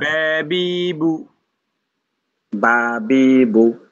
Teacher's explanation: এখানে দাঁতের কোন কাজ নাই শুধু ঠোঁটের কাজ